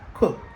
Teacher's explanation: ED gen son t parce que li placé après une consonne non sonore qui est k